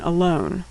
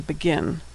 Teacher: shva makes a generic unstressed vowel sound that linguists call a schwa sound